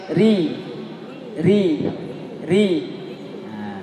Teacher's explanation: Ri kalau dia baris kasroh, tarqiq tipis.